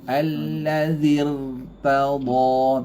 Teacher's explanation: Tegang pangkal lidah. Takrir dia tebal.